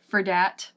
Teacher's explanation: For becomes fur, and then that becomes dat sometimes.